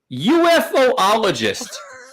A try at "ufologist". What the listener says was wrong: No, ufologist. There's not two O's. Ufology. Like ufologist.